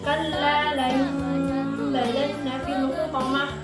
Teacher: nun mati bertemu dengan huruf ba dan kita ditukar bunyinya menjadi huruf mim